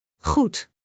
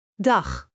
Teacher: In each of these words, the sound begins deep in your throat, and moves gently outward with the breath. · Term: Dutch 'G'